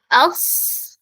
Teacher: ഈ ലെറ്ററിന് എന്തുണ്ട് ചെറിയൊരു പ്രത്യേകതയുണ്ട് ഓക്കേ നമുക്ക് കേട്ടു നോക്കാം അസ് ഓക്കേ അസ് എന്ന് പറയുമ്പോൾ ഒരു സ് എന്നുള്ള സൗണ്ട് ഒരു സ് എന്നുള്ള സൗണ്ട് എന്താവുന്നുണ്ട് എക്സ്ട്രാ വരുന്നുണ്ട് അഥവാ ഒരു വിസിൽ വിസിലിന്റെ ഒരു സൗണ്ട് · നാവിന്റെ അറ്റം അവിടെയാണ് ചെയ്യുന്നത് താഴത്തെ പല്ലിന്റെ ആ ഒരു ഉൾഭാഗത്ത് അവിടെയാണ് തട്ടിക്കേണ്ടത്